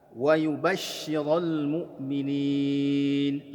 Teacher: Nah, di situ ada shin ya, bertasydid, berikan nabrah. Perhatikan di antara sifat shin itu adalah ada tafasyi, ada suara yang berhamburan ketika kita mengucapkan bunyi huruf shin.